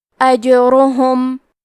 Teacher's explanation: کلمت اجرہم میں جیم پہ جزم ہے، تو ہمیں جیم کو قلقلہ سے پڑھنا ہے